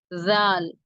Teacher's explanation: நாவின் நுனிப்பகுதி மேல் நடுப்பற்களின் விளிம்பை தொட்டு விலகும் போது உண்டாகிறது நாவின் நுனிப்பகுதி மேல் நடுப்பற்களின் விளிம்பை தொட்டு விலகும் போது உண்டாகிறது குரல் சற்று